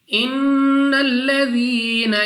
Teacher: نون مشدد غنہ کر کے پڑھیں گے، یعنی ناک میں لے جا کر پڑھنا ہے